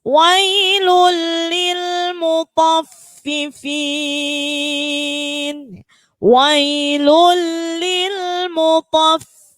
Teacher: Jadi ketika to itu huruf tebal, fa-nya huruf tipis.